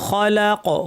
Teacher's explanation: খফ ভারী, লাম পাতলা, কফ ভারী